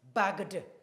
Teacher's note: The final sound still ends in the G, and G is voiced. So adding ed, the ed will be d.